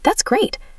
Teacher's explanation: If I'm genuinely happy and excited, my voice goes way up and I sound enthusiastic.